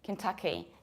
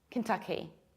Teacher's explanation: And this is not Ken like Ken from Barbie, but it's Ken, Kentucky. Imagine that you drop this A and you say Ken, Kentucky.